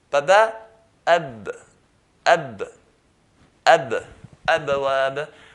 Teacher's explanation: So if I say ab, you're not going to find that air flows with it. But if you say ba with the air flowing, it will sound like a p.